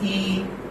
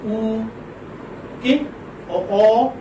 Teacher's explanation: when we pronounce E, then our lips are spread. They are not rounded. But when we say oo, okay, or O, then our lips are rounded.